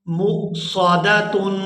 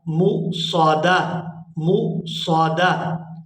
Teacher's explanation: مصادہ، دال کو یہاں ہا کے ساتھ ملا دیں گے، دال ہا زبر دا، مصادہ مصادہ۔ یہاں وقف کی صورت میں یہ تا ہے ہا کے اندر کنورٹ ہو جائے گی